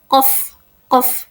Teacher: pada huruf qof ini hampir tak bersuara tetapi mengeluarkan letupan. Bunyi letupan qof.